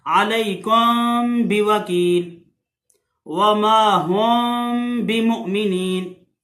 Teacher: ये मीम पे होंठ नहीं मिलने देने तब इख्फा होगा, यानी कि मीम को छुपा के पढ़ना है। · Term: इख्फा शफवी